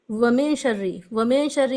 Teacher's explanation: नून के बाद शीन आए तो गुन्ना के साथ या नून की आवाज को छुपाकर इफा करके पढ़ेंगे